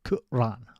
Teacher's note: there's like a glottal pause in the middle